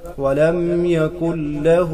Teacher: ولم يكن له ولم يكن له نون ساکن کے بعد حروف یرملون میں سے لام آ رہا ہے تو یہاں ادغام بلا غنہ ہوگا ولم يكن له یعنی نون لام میں پورا کا پورا داخل ہو جائے گا